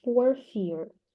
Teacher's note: The first R is silent for fear because it is followed by a consonant, and the second is pronounced because it is followed by a vowel.